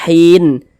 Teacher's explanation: Ini kita berhenti di huruf nun tidak dibaca panjang, makanya hurufnya kita sukunkan, sehingganya dibaca hin, tidak dibaca hinin tapi dibaca hin, seperti itu.